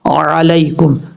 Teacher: زبر ع، لام یا زبر لائی، کاف میم پیش کم، علیکم، عین کو اپنے مخرج سے ادا کرنا ہے، حمزہ کی آواز نہیں آنی چاہیے